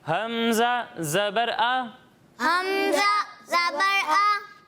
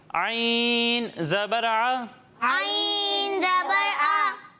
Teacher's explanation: حلق کے نچلے حصے سے. اور جب ہم عین کی ادائیگی کریں گے تو اسے حلق کے درمیانے حصے سے پڑھیں گے